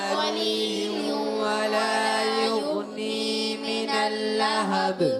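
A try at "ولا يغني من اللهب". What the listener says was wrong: اچھا پھر آپ کا غنہ کمزور ہوا ہے، پھر تمہارا غننے کی مقدار پوری کرے، لا ظلیل ولا یغنی من اللہب،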